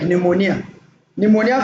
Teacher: the P there is silent